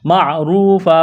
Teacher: را کو موٹا کرنا ہے، واو مدہ ہے، ایک الف کے برابر کھینچنا ہے